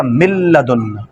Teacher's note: اب دیکھیں نون کے بعد لام ہے، نون کو لام کر کے لام کا لام میں کر دیں گے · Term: ادغام بلا غنہ